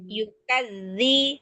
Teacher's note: Yukadzi, hati-hati dengan huruf zal. Pertahankan ujung lidahnya di ujung gigi seri atas, dibaca dengan cara tasdid, berarti ditahan.